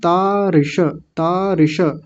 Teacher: छोटी इ की मात्रा है तो जल्दी बोलेगी और मूर्धन्य शकार पूरा बोलेंगे।